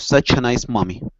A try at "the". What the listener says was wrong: Okay, to have the necklace instead of z. Okay, instead of a z sound, make sure you're using your tongue to pronounce the sound. Okay, so it's the necklace.